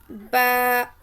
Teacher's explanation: बंद होठों के गीले हिस्से से निकलता है · بند ہونٹوں کے گیلے حصے سے با نکلتا ہے